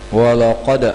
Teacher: Qalqalah sughra yakni melantun yang kecil